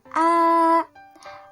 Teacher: pada kolom tengah atau pusat baris rendah terdapat fonem A